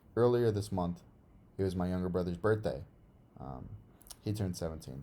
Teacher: in between these two phrases, we've got a short pause, and then after this exclamation point, there's a long pause